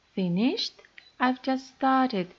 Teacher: If you want to give special emphasis to words, for example, if you are very surprised, we sometimes use a lot of stress and our voice goes especially high